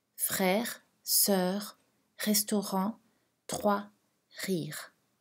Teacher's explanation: Cette leçon présente le R uvulaire. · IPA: [ʁ]